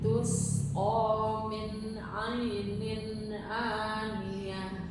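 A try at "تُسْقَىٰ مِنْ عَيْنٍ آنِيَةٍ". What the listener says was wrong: Min ainin jangan kepantul. Ainin aniyah.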